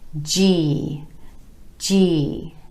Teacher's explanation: Starting first with the J as in joke consonant going into the E vowel sound.